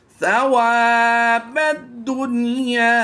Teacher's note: ادغام مع الغنہ یا بلا غنہ ہونے کے لیے ضروری ہے کہ نون ساکن اور حروف یرملون الگ الگ کلمہ میں ہوں، لیکن یہاں پر نون ساکن کے بعد یا حروف یرملون میں سے اسی کلمہ میں ہے، تو یہاں پر ہم ادغام نہیں بلکہ اظہار مطلق کرتے ہوئے یہاں پر بغیر غنہ کے پڑھیں گے